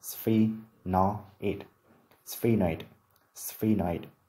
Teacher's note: Trọng âm dưới vần thứ nhất